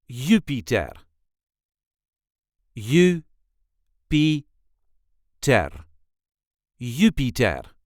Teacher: There is a light emphasis on the first syllable,